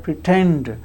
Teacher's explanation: the word pretend, this t is occurring in the beginning of the second syllable here in the word pretend, and t sound here is again pronounced with a puff of air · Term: aspirated t